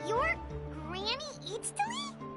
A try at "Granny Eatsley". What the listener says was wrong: But emphasis on Eatsley, not Granny.